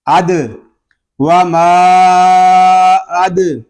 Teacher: دال ساکن ہے، اس میں کلکلہ خوب ظاہر کریں گے